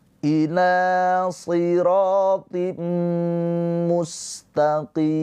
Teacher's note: Mimnya ini disukunkan karena berhenti ujung ayat. Maka qi yang tadinya mad thobi'i menjadi hukumnya mad arid lisukun menjadi panjang dua atau empat atau enam harakat